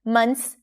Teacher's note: notice how we drop the TH here. You don't have to pronounce it.